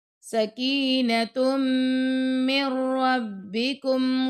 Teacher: تا کو میم سے ملائیں گے اور میم کو را سے ملانا